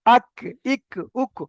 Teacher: জিভের গোড়া থেকে একটু আগে এসে, মানে এই কফটা যেটা থেকে উচ্চারণ হয়েছে ওর থেকে একটু আগে এসে ওই সোজা উপরের তালুর সাথে লাগিয়ে কাফটা উচ্চারণ হবে